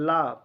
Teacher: ला पार्श्विक व्यंजन है,